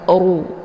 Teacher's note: tebal ya karena harakat rnya berharakat zumah dengan posisi ujung lidah terangkat ke langit